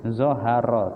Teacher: Zoharo tafkhim, ro dibaca tebal, ro berharokat fathah.